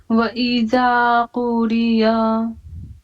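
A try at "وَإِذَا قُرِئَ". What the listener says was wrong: कुरिआ. पूरी आ पढ़ेंगे, आ, या को नहीं पढ़ेंगे, या कट है, ठीक। व इज़ा कुरिअ, व इज़ा, जाल पे मुंह खोलिए, कुरिअ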